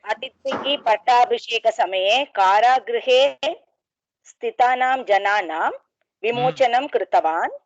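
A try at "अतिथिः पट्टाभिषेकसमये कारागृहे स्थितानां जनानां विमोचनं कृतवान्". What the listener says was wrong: Beautiful.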